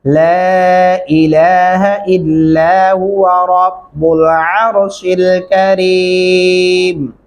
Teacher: یہاں پہ 2 الفی مدہ ہے، اس لیے آواز کو لمبا کریں گے